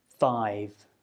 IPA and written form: faɪv (five)